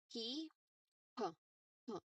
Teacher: And lastly, P. There's strong puff of air there. Okay. And your two lips meet together.